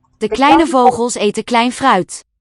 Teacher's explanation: note that the V is a voiced fricative